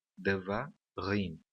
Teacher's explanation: Existem 3 sílabas nessa palavra e a última sílaba é a sílaba tônica